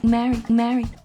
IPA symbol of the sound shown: d